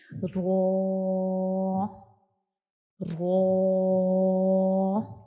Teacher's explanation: ہماری زبان کی نوک کا اوپر والا حصہ اوپر کی طرف اٹھے گا، اور جو ہمارے اوپر والے سامنے والے جو 2 دانت ہیں ان کے اندر والی سائڈ پہ جو مسوڑے ہیں ان سے بالکل ٹچ نہیں کرے گا، تھوڑے سے فاصلے پہ جائے گا. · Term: را کا مخرج